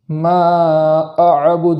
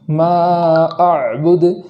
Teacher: کلمے کے اندر اس بات کا بھی خیال رکھنا ہے کہ عین پر جو جزم ہے وہ متحرک نہ ہو جائے